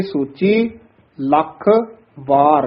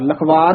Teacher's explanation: ਲਖ ਥੋੜਾ ਜਿਹਾ ਦੱਬ ਕੇ ਬੋਲਣਾ ਕਸ ਕੇ ਉਚਾਰਨ ਕਰਨਾ ਹੈ ਵਾਰ ਵੱਖਰਾ ਬੋਲਣਾ ਹੈ